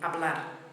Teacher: It's the infinitive form of the verb, and the beat falls on the ending.